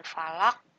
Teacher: huruf qafnya harus dipantulkan walaupun berharokat kasroh, cuma harus disukunkan, dimatikan. Ini disebut dengan qalqalah kubro ya.